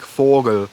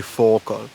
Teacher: that G is then devoiced to a C sound